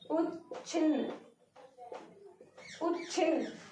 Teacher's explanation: तो यहाँ पे दंत है और ये छ क्या है, तालव्य है, तो दंत पर जाने की बजाय जीभ सीधे तालव्य पर जाने की कोशिश करेगी